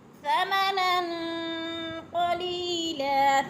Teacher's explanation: وَلَا تَشْتَرُوا بِآيَاتِي ثَمَنًا قَلِيلًا، ثَمَنًا پہ غنہ ہو رہا ہے، نون ساکن کے بعد قاف حروف اخفا میں سے پہ غنہ، ناک میں آواز لے جانی ہے۔ غنہ کا معنی ہے لفظ کو چھپا کر پڑھنا، ناک میں آواز لے جانا، تھوڑا سا رک کے پڑھنا۔